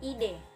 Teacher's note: Yang ketiga bunyi E. Ciri-cirinya tengah, depan, tak bulat.